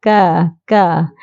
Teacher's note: ka ni juga pangkal lidah diangkat ditekan ke Pangkal langit yang ke depan sikit dari qa tu Ha yang ke depan sikit dari anak tekak ka ka ha